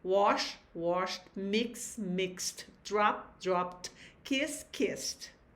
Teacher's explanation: Já no segundo caso, quando o verbo terminar em consoantes mudas, ou seja, unvoiced consonants, conforme os exemplos que nós vamos ter aí, então a terminação ED vai ter o som de T. E também não cria uma nova sílaba.